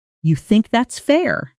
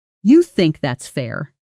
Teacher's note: Now listen to the exact same words, but said with falling intonation, which turns it into more of a challenge or a statement of disbelief